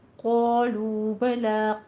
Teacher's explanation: क़ौफ को पुर पढ़िए, अलिफ भी पुर हो जाएगा। लू में वाव मद्दा को भी उतना ही 2 हरकतों बराबर लंबा खींचना है, दोनों होंठ गोल करते हुए